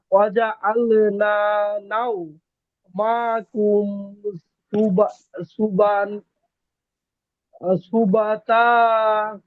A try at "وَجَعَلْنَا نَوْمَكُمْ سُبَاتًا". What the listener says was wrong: হ্যাঁ এই যে এই বা কি টান হবে না, জবরের বাম পাশে খালি আলিফ, এই যে এই মা,